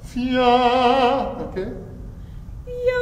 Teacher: it's really as an e vowel, nasalized, and you can afford to go a little bit towards a with this particular sound